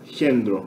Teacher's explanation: No grego tem uma leve palatalização. Esse K aqui, né, no grego moderno, ele é pronunciado Kendro.